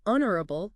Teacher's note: The H is silent, right? So, we go straight to that O sound. And of course the stress is on that first part.